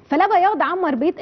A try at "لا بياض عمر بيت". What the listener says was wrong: بيت مش بيض، بيت انت بتقولي بيض؟ انت قلتيها بيض.